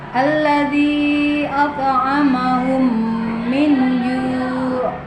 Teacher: Dengan demikian dapat disimpulkan bahwa disebut idgham misli apabila ada mim sukun bertemu dengan huruf mim. Cara membacanya adalah memasukkan huruf mim ke dalam huruf mim disertai dengan suara gunna sekitar 2 ketukan atau harokat.